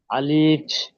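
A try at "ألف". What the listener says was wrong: আলিফ টান হয়ে যাচ্ছে, আরো জলদি পড়তে হবে।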